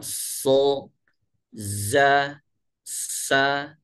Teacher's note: Terjadinya ini karena 3 huruf ini sod, zai dan sin ketika keluar melalui ruang yang sempit, sehingga suara terhalang sehingga menyebabkan bunyi desis, ya, bunyi desis akibat bertemunya, ya, gigi atas dan gigi bawah ini secara simetris, sehingga suara, ya, keluarnya ini melalui ruang yang sempit.